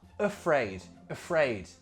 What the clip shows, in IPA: əfreɪd